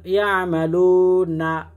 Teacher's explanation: পেশের পর ওয়া সাকিন 1 আলিফ টান